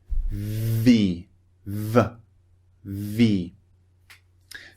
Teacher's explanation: you're using your vocal chords to produce the sound as well as pushing air out of your mouth through your teeth and bottom lip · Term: V sound